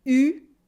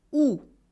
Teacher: When you pronounce OU, your lips are rounded, your mouth is almost completely closed, OU, and your tongue is in the back, OU. When you pronounce U, it's the same, except your tongue is much more in the front. It should press against your teeth.